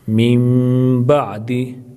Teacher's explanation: اب یہاں نون کو میم میں تبدیل کر کے میم کا میم میں ادغام کریں گے، یعنی نون کو خاموش کر دیں گے، نون کی جگہ میم پڑھیں گے۔